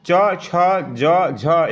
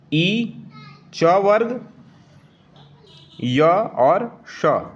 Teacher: ई और चवर्ग, य और तालव्य श, ये वाला स, ये सभी उच्चारण स्थान तालु से होते हैं, तो इन्हें तालव्य व्यंजन कहते हैं।